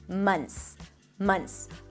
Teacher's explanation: the TH. You can totally drop it, and it's going to sound just fine.